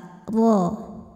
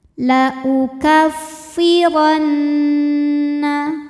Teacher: Huruf ra dibunyikan secara tafkhim sebab berbaris fathah, maka kita bunyikan dengan tebal.